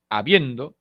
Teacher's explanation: El acento se encuentra en la segunda posición silábica. Esto es la penúltima sílaba. No lleva tilde porque la última sílaba carece de coda.